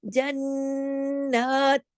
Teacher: نون پہ اکمل غنہ بھی ہو رہا ہے، پھر اس کے اوپر کھڑی زبر ہے، وہ ایک الف کے برابر کھنچ بھی رہا ہے، غنہ بھی ہو رہا ہے، کھنچ بھی رہا ہے، جنات۔